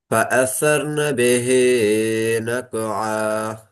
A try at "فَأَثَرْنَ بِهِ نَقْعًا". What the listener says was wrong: பிஹி என்ன கொஞ்சம் குறைக்கணுமே. நீங்க ரெக்கார்டு கேளுங்க, அப்போ உங்களுக்கு விளங்கும்.